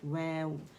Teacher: ویو جو ہے complete rolling سے لپس کے ادا ہوتا ہے اور زبر کے لیے ظاہر ہے جبڑا کھلتا ہے. جیسے میں نے وا نہیں بولیں گے اسے.